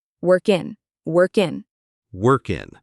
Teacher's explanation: we link the K in work to the I in in.